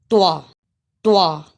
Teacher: सा लगता है त्वा एक अलिफ के बराबर लंबा करेंगे इसे त्वा की अदा में जबान की नोक यानी जबान का किनारा जब सनाया उलिया की जड़ से लगे तो यह हर्फ अदा होता है · طوا کو پڑھتے ہوئے ایک جھٹکا سا لگتا ہے